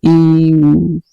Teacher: जिन स्वरों के उच्चारण में मुख्य द्वार लगभग बंद रहता है उन्हें संवृत कहते हैं।